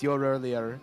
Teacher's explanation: in a british accent you do pronounce the r if there's a vowel immediately after